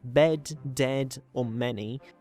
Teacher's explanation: Moving slightly down within the front column, we have the mid-high front unrounded vowel, which in English is slightly lower than what the chart would suggest. It occurs in words such as bed, dead, or many, although many speakers even in standard accents might use the even lower variation, the low mid-front unrounded vowel.